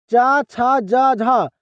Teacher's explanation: च बोला जाता है ना यह तालु से बोला जाता है।